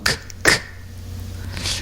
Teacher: o K é muito seco. E o K não vibra